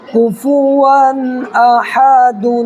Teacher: آخر میں نون کی آواز آ رہی ہے، اسی کو ظاہر کرنا ہے